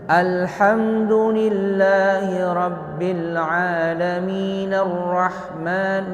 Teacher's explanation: Jadi alif lamnya enggak dibaca sama sekali. Tertulis dia tetapi enggak dibaca. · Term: Hamzah wasal